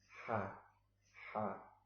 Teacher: Dia suaranya di pangkal tenggorokan